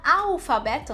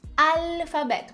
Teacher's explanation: eu coloco um som de u no L E isso no espanhol não existe